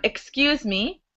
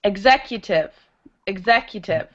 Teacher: And then the GZ sound is like when you're electrocuted, you go GZ. So, kss is like air coming out of a tire, and kzz is like an electrocution. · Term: the two X sounds